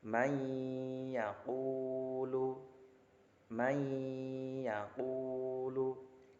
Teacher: Cara membacanya selain dimasukkan huruf pertama yaitu nun sukunnya ke huruf yang kedua yaitu ya, juga diberi dengung. Jadi ada jedanya, may yaqulu 2 ketukan. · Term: idgham bi gunnah